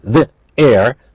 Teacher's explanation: they're linked but they're not blended they're different sounds because we have a vowel and we have a different vowel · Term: linking